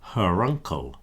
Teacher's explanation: you get that R reappearing at the beginning of the sound